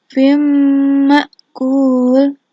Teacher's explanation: membacanya dimasukkan ke dalam huruf mim disertai dengan dengung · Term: idgham bi ghunah